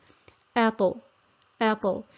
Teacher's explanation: the ta is another letter of qalqala, which we've had previously, where the sound is bounced. So we have bouncing of the sound off the articulation point.